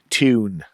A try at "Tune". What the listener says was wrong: Ew, not ooh. Tune.